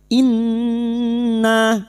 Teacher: nun yang bertasdid gunna musyaddadah kita dengungkan selama tiga harakat